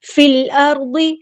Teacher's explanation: فا کو ہم نے لام کے ساتھ ملا دینا، حمزۃ الوصل ڈراپ ہو جائے گا